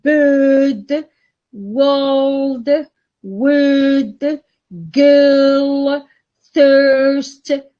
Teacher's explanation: vowel huh it's a central vowel it's a mid one also it is central it is mid but it is long it's a long vowel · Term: long central vowel